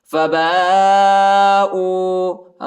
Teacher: با کے بعد جو الف ہے اس کے اوپر بڑا مد ہے، اس کو تقریباً 3-4 سیکنڈ تک کھینچیں گے